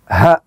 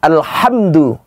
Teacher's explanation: Kalau huruf ha itu adanya di dada, ha. Alhamdu itu adanya di ujung kerongkongan.